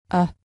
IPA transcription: ә